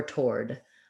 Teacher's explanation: toward with just an or diphthong and the d